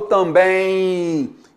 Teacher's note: Eu não falo também, eu falo também. Então, esse M, ele tem som de I